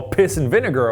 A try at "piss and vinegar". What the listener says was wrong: Pissing vinegar. Okay, I thought you said pissing vinegar. How would you enunciate a little bit more? It sounded like pissing vinegar to me.